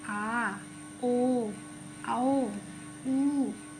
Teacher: पश्च स्वर जो जीवा के पीछे भाग से बोला जाता है।